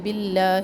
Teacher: باللہ یہاں پر اس میں جلالہ کو باریک پڑھیں گے